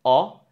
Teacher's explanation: O is quite frontal. It resonates in the entire of your mouth. And you do it with your open mouth, like O.